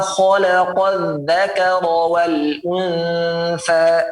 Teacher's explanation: kho tebal ya, dan sifatnya juga dia mengalir, bukan wama kho tebal dan singkat, tidak.